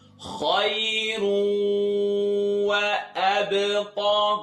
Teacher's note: the sound is traveling in my nose when I pronounce this wow